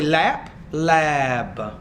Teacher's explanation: If I say lap, lab. So the B is going to make the vowel longer because the B is a voice consonant.